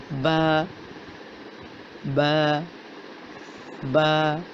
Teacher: با کا مخرج ہے دونوں ہونٹوں کی اندرونی تری کے ملنے سے با کی ادائیگی ہوتی ہے۔ · اس کی صفت ہے کہ اس کو سیدھا پڑھا جاتا ہے، موٹا نہیں کیا جاتا